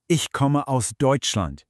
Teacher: That falling sound at the end basically says, I'm stating a fact, and now I'm done with my thought. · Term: falling tone